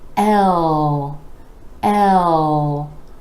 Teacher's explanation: rolling into the dark L where the back of the tongue is coming back and down